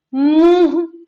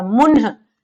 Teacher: जहां आधा न के जैसा, स्वर रहित न के जैसा उच्चारण हो, उसे हम अनुस्वार कहेंगे। लेकिन जहां उच्चारण में न नहीं आए, मुंह से ध्वनि न निकले, बल्कि उसके जगह नाक से ध्वनि निकले। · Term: अनुनासिक